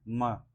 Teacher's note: माँ बोलने पर क्या होता है, स्वर तंत्रियों में कंपन हो रहा है। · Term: सघोष